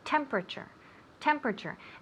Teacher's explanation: We put the accent on the first syllable.